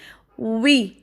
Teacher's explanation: اس کو وی نہیں پڑھنا، اوپر والے دان نیچے والے ہونٹ پہ لگا کے نہیں، بلکہ دونوں ہونٹوں کو گول کر کے